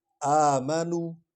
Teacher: الف کو لمبا کریں گے کیونکہ اس پر کھڑی زبر ہے